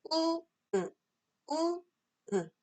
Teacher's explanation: 우 상태에서 입술만 평평하게 해주시면 바로 으가 되죠. 우, 으, 우, 움직이지 않게.